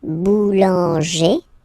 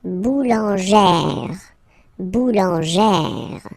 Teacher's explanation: plus this accent grave, you pronounce it like E, really open E sound